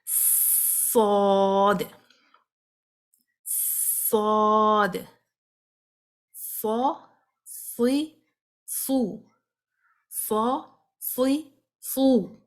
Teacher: جو صاد کی آواز ہے نا وہ بھی منہ بھر کر آپ نے نکالنی ہے، فل ماؤتھ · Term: ہیوی